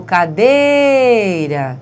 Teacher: Veja a sílaba tônica de cadeira, é o dei